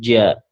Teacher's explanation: huruf ja, lidah bagian tengah yang dinaikkan ke atas